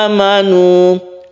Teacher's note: a ini panjang satu alif karena dia itu mad badal ya. Badal itu artinya ganti.